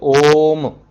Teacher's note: ओम, एक बार में आप ओम ऐसा नहीं बोलोगे, ओम, मतलब तीन ओ बोलने में जितना समय लगे उतना समय आपको ओ बोलने में लगाना है, उसके बाद म बोलना है। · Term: प्लुत स्वर